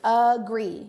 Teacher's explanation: You hear that schwa sound at the beginning.